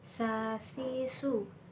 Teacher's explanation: tsa melafalkan dengan menyentuhkan ujung lidah dengan dinding gigi seri bagian atas kemudian diucapkan dengan mengalirkan suara dengan nafas dengan lembut